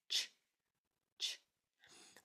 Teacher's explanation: This CH is a very fast sound. You cannot sustain it or hold on to it. It's a very quick ch, ch.